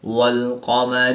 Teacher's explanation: قاف حروف مستعلیہ میں سے ہے تو اس کو پر یعنی موٹا پڑھیں گے